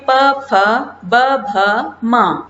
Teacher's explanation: प फ ब भ म इन्हें बोलते वक्त होठों को स्पर्श करते हैं। ये जो ध्वनि निकल रही है वो होठों को स्पर्श करते हुए निकल रही है। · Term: प वर्ग